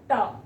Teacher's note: आपकी जीभ आपके मूर्धा को टच करती है।